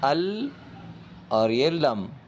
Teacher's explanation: جیسے اس ایگزامپل میں آپ دیکھ رہے ہوں گے، الف نون زبر ان اور لام کے اوپر تشدید ہے، تو بجائے نون کو پڑھنے کے الف کو ڈائریکٹ لام سے ملانا ہے، ال اور یہ لم، اس طرح۔ تو جو ہم نے نون کو مرج کر دیا لام کے اندر، اور نون کا ساؤنڈ بالکل نہیں آئے گا اس میں، اسے کہتے ہیں ادغام۔